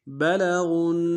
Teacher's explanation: بلغون میں غین کو نون کے سامنے لانا ہے، نون کے اوپر تشدید زور دیں گے